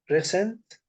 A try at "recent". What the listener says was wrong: Yeah, the stress is on E, recent. So the stress is not on C like recent, it is recent.